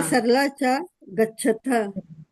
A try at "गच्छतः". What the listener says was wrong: गच्छतः, गच्छतः, त होगा, थ गच्छतः, बहुत गच्छतः, हाँ विसर्ग लगेगा। हाँ हाँ, विसर्ग लगेगा, बहुत सही। रीता सरला च गच्छतः।